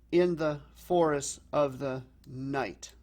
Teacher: we're ending on a single stressed syllable · syllable in the forest of the night so in this case it gives it a more pounding feel to it because it's the stressed unstressed pattern